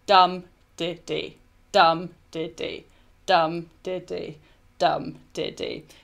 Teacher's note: So stressed, unstressed, unstressed. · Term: dactyl